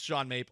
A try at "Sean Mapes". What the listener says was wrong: Well, it's Sean Mapes with an S at the end. You said Sean Mape. You it.